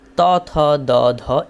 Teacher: ত থ দ ধ এগুলো হচ্ছে দন্ত থেকে উচ্চারিত হয়